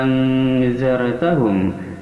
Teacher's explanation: panjang sekali 6 harakat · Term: mad lazim kilmi mukhafaf